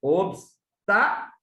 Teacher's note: Separando as sílabas, o tá é a terceira da direita para a esquerda mais forte. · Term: proparoxítona